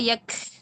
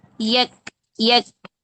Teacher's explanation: اور یک یہ ہمس نہیں ہوتی ہے کاف کی ہمس ہوتی ہے شدت والی. کاف میں شدت ہے نا، رخوت تو نہیں ہے. اگر ہم رخوت رکھیں گے نا تو بنے گا یک.